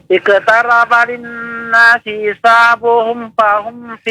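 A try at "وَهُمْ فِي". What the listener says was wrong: Lagi masih fa juga ya. Wow, bukan fa, itu wow.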